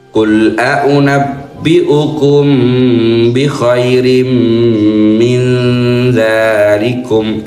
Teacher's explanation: Dzalnya dua ketukan mad thabi'i.